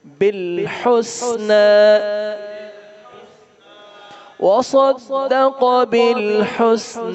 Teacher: صاد اور قاف کو موٹا پڑھیں گے